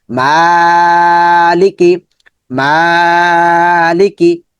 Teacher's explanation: কাফ নিচে জের আছে, জের মানে বাংলাতে রস্বীকার, কি, মালিকি। মাটা লম্বা হবে, এই দুটা দ্রুত করে পড়তে হবে যেহেতু হরকত